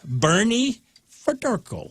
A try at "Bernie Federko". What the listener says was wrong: It sounded like you said Ferdurko, but